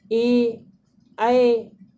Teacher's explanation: ए जब बोल रहे हैं तो कंठ पे आवाज़ आ रही है दोस्तों, और तालव्य का भी यूज हो रहा है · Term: कंठ तालव्य